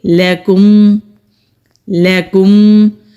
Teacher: لام کو کھینچنا نہیں ہے، لاکم کریں گے تو یہ حرام غلطی ہوگی